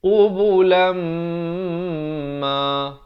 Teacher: Tanwin bertemu mim. Baris dua bertemu mim. Bacanya masuk beserta dengung dua harakat. Asalnya qubulan, tapi bila bertemu mim jadi qubulam ma, baru masuk ma. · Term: idgham bi gunnah